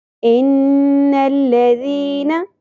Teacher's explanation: سورۃ البروج آیت نمبر 11۔ ان الذین، نون مشدد غنہ ہوگا، لام باریک ادا کریں گے، ذال بھی نرمی کے ساتھ اور باریک ادا ہوگا، یا مدہ ایک الف کے برابر کھینچنا ہے، نون کی زبر کو زیادہ نہیں کھینچنا۔